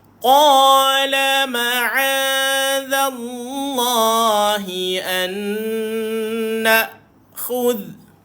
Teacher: hujung lidah dikeluarkan, duduk bawah gigi atas macam kita pelat sikit